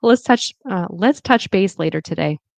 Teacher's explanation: It'll be a flap T, which is like a D.